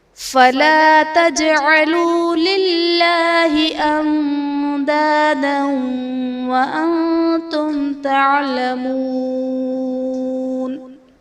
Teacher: للہ میں اسم جلالت اللہ عز و جل کے لام سے پہلے زیر ہے تو یہاں پر اسم جلالت اللہ عز و جل کے لام کو باریک پڑھیں گے